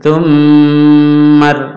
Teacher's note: ada mem tasdid, ini didengung tahan. Tummar, langsung ke ro.